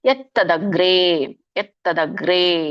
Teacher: ಎತ್ ವ್ಯಂಜನ ಇದೆ, ಹಾಗಾಗಿ ನೀವು ಮುಂದಿನ ಒಂದು ಅಕ್ಷರ ಒತ್ತು ಬಂದಾಗೆ ಹೇಳ್ಬೇಕು. ಮುಂದಿನ ಅಕ್ಷರ ತ ಇದೆ, ಹಾಗಾಗಿ ತಕ್ಕೆ ತ ಒತ್ತು ಬಂದಾಗೆ ಇಲ್ಲಿ ಹೇಳ್ಬೇಕು